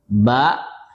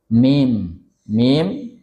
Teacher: Hurufnya ba dan mim bibir bertemu.